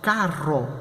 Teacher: Com a diferença, R-doble ele vai ter um som múltiplo, R.